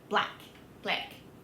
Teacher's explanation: the Australian short A is much wider.